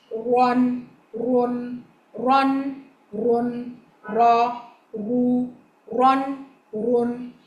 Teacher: Takrar, the trilling, a slight trilling. When you pronounce the letter Ra, there should be a slight trilling in the sound. And that trilling should not exceed, it should not go more than required.